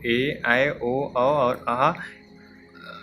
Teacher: जिनके उच्चारण में हस्त स्वर से अधिक समय लगता है, यानी कि इसमें 2 मात्राएं लगी हुई हैं और इनमें अधिक समय लगता है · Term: दीर्घ स्वर